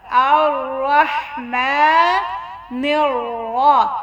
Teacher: را کے اوپر زبر ہے تھوڑا سا موٹا کرنا ہے